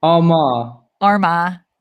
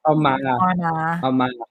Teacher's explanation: The emphasis is on ah.